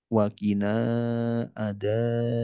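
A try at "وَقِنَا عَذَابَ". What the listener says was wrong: Hanya kepanjangan hati-hati. Waqina adaban.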